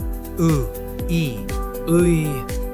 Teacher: Depending on its position, it can sound like ui, I, or even just ui. Start by saying u, then slide into e without rounding your lips. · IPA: [ɯi]